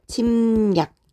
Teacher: 앞에 있는 미음의 영향을 받아서 뒤에 오는 리을이 니은으로 바뀌는 침략 이렇게 발음을 하게 되죠. 얘는 앞에 있는 것 때문에 뒤에 것이 바뀌었기 때문에 자 순행동화야 라고 볼 수 있고요.